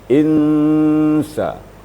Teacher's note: insan itu adalah ikhfa hakiki, memasukkan atau menyembunyikan nun mati atau tanwin ke dalam sin. Insa, kadar gunanya juga dengungnya atau samarannya sekitar 2 ketukan atau boleh juga 3 ketukan atau 1,5 alif.